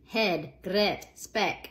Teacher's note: all three of these words were being pronounced with something like the short eh sound